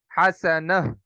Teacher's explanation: ایک تو اس گول تا کو ساکن کر دیں گے، دوسرا اس گول تا کو ہا سے بدل دیں گے۔ حسنتن، حسنتن، حسنتن سے حسنہ۔